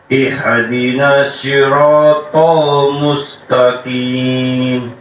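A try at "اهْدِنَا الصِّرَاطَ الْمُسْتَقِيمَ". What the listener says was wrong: Haknya kurang dalam. Ha, hi, hu, bah, ihdinas sira.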